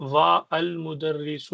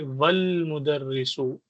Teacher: لیکن اگر آپ کے پاس وہی اس سے پہلے واو آ گیا یہاں پر، واو سے ملانا ہے تو اسی صورت میں الف لکھا جائے گا لیکن پڑھا نہیں جائے گا. آپ وا المدرس واقف نہیں کہیں گے، یہ غلط ہو جائے گا.